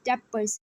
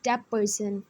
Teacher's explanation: So in this sound, t sound is changed into p sound. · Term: regressive assimilation